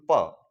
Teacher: जैसे कि मैं बोलूं प, तो प ध्वनि बोलने के लिए हमें ऊपर और नीचे के दोनों होठों को मिलाकर ध्वनि को उच्चरित करना पड़ता है, इसलिए उनको ओष्ठीय कहते हैं।